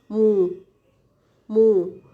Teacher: our lips are rounded, moo, and then tight, right? So that becomes moo, moo. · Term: bilabial